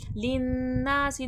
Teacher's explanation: नून अलिफ ज़बर ना, अलिफ मद्दा खींच कर। लिन्नासी, नून मुशद्दद गुन्ना होगा, ना में अलिफ मद्दा खींच कर